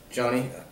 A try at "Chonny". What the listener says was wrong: No, Chonny. It's more of a CH sound, the way we say those. Chase. Chase make a ch sound. Chonny.